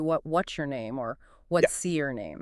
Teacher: the S sound in what's links directly to the Y in your it often blurs into what what's your name or what's C your name.